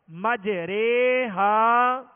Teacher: اس راہ کو باریک پڑھیں گے، پر نہیں پڑھیں گے، موٹا نہیں پڑھیں گے، بلکہ اس راہ کو باریک پڑھیں گے.